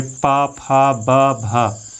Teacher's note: इन 4 वर्णों का उच्चारण करने के लिए हमारे ओष्ठ जो हैं वो मिलते हैं और खुलते हैं, तो वहाँ पर ध्वनि का निर्माण होता है। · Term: ओष्ठ व्यंजन